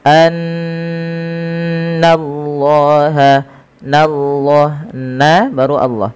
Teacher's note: Setiap kita mendapati adanya nun berharakat tasydid, kita tahan dulu suara bunyinya sepanjang 2 harakat karena ia kita namakan dengan bacaan gunnah. Kemudian lafal Allah bila didahului dengan fathah maka dia ditebalkan, tapi nanya tetap tipis.